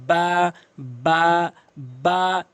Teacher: দুই ঠোঁটের ভেজা অংশ আছে সেটি মিলাবেন। যেমন বা বা এক আলিফকে টেনে পড়বেন।